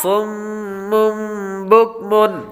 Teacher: دوسرے لفظ کے اندر صاد، صاد حروف مستعلیہ میں سے ہے اس لیے اس کو پر پڑھیں گے. صاد کے بعد میم مشدد ہے تو میم پر غنہ کریں گے